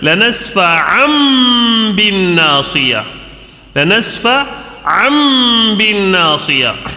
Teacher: آواز کو ناک میں تھوڑی دیر گھما کر غنے کے ساتھ پڑھیں گے اور یہ نون کو میم سے بدل کر پڑھیں گے، نون نہیں پڑھیں گے، میم پڑھیں گے، اس کو اقلاب کہتے ہیں۔ · تنوین کے بعد با آنے کی صورت میں یہاں پہ میم سے بدل دینا ہے